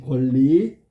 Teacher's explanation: 앞말의 받침 니은이 리을과 합쳐지면서 리을의 영향으로 니은이 리을로 바뀌어야 되겠지. 그러면 이게 유음화를 설명하고 있는 거다.